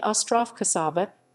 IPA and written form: ˈɔstrof koˈʃavɐ (остров Кошава)